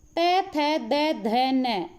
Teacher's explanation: जीभ कहाँ टच हो रही है? दांतों पे टच हो रही है, तो कौन से व्यंजन हो गए? ये दंत्य व्यंजन हो गए।